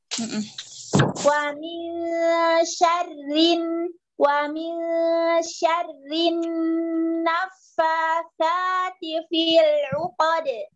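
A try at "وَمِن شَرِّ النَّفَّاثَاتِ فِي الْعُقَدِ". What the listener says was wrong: Baik, ikhfa'nya wa min, tambah lagi dengannya. Wa min syarri, langsung. Syarri.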